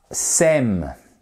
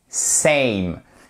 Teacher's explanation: pas saine c'est same et ces matérialisé en phonétique par ceci c'est une diphtongue donc son qui est double